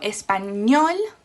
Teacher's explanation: not n or s it finishes with an l so espanol the stress is on the last syllable